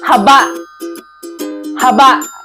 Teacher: may bigkas na mabilis at may impit na tunog sa bandang dulo ng salita